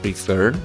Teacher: La terminación es una combinación de consonante, vocal, consonante y la fuerza o el acento de este verbo se encuentra en la última sílaba